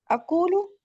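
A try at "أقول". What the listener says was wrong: अकूलू, माशाल्लाह।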